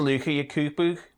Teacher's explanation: Book, cook and luke are typically pronounced with the goose vowel rather than that of foot.